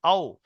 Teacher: একদম দুই ঠোঁট মিলবে না, মাঝখান থেকে আওয়াজটা বেরিয়ে আসবে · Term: ওয়াও